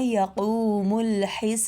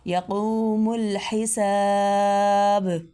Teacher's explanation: با پہ کلکلہ یعنی با کو تھوڑا ہلا کے ادا کرنا